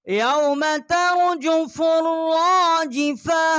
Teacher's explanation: فا کو را کے ساتھ ہم نے مشدد کیا ہے اور ایک الف جتنا آواز یہاں بلند کی ہے